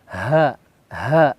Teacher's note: huruf ha besar atau ha di tenggorokan paling dalam. Ha, seperti itu.